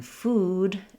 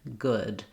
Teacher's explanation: making a good distinction between the ooh in food and the uh in good. That can also be confused because of this oo spelling.